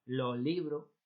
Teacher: apertura de la vocal final para sustituir a la s